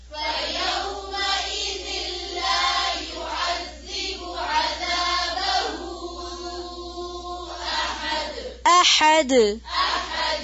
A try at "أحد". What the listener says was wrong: حمزہ کو عین کی طرح نہیں پڑھنا, حمزہ کو حمزہ ہی پڑھیں گے.